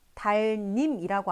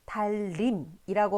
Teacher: 앞에 오는 리을의 영향을 받아서 이 뒤에 오는 니은도 리을로 바뀐 현상이에요. 그래서 우리가 이러한 현상을 뭐라고 부르냐면 니은이 리을로 바뀌었기 때문에 유음으로 바뀐 거죠. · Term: 유음화